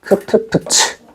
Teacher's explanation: 된 소리보다는 조금 약하고 예사 소리보다는 조금 강한 얘기야. 그래서 얘를 거센 소리라고 불러요.